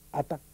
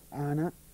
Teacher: esas esas dos consonantes a la n esa y la t Serían dos consonantes agudas pero se diferenciarían que una es interrupta ata hay un corte y la otra es continua Ana y no hay corte